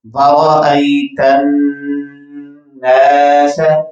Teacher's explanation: اور نون کے ساتھ چونکہ الف مدہ ہے تو اس کو ہم لمبا کر کے پڑھیں گے